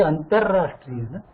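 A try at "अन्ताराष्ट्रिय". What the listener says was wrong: No, not in Sanskrit. That is in our other local languages. The double R, Antarrashtriya, that is on the local. In Sanskritam, the double R is avoided here, right?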